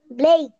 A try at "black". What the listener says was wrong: ওটা তো সিবিসি word বললাম, ওটা শর্ট সাউন্ড হবে। এখন যে বুঝাই দিলাম আমি, ল, এ, ক, এ, ক, ব্ল্যাক,